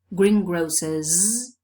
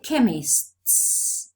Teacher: green grocers voiced but we say chemists voiceless